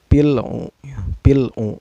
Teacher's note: lam sukunnya dibaca secara jelas ya, gak boleh dengung dan gak boleh memantul. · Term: alif lam qamariyah